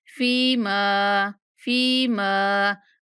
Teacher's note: فا کے بعد یا مدہ اور میم کے بعد الف مدہ دونوں کو کھینچ کے پڑھنا ہے